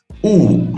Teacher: my lips are rounded and sharp